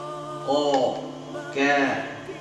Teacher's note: Tapi kaf punya al-hams ya, keluar napas. Seperti huruf ta. · Dari pangkal lidah. Pangkal lidah ketemu dengan langit-langit setelah huruf qaf. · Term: huruf kaf